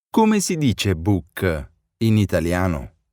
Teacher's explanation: Note the rising intonation of the sentence to mark that it's a question.